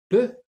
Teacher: Il y a blocage de l'air. P. Et ensuite, il y a explosion de l'air, ce qui donne peu. Donc, peu est une consonne occlusive.